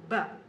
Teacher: B is a plosive which means we cannot prolong the sound